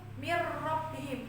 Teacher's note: huruf nunnya itu kan melebur semua ke huruf ro, baik makhraj huruf nunnya maupun sifat nunnya.